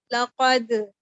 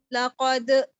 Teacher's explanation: قلقلہ بھی کیا اور اینڈ پر جھٹکا بھی دے دیا، حمزہ کی ساؤنڈ آ گئی